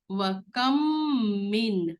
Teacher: میم مشدد پر غنہ کرتے ہیں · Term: ادغام شفوی بالغنہ